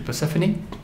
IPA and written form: pərˈsɛfəni (Persephone)